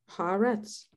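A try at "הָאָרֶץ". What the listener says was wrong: Okay, the last word is ha-a-retz. this okay, you went haaretz. It's got to be ha-a-retz.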